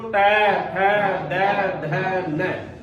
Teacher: अब बताओ इनको उच्चारण करा तो अपनी जीभ दोनों दांतों के बीच में आवेगी, दोनों दांतों के बीच में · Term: दंत वाले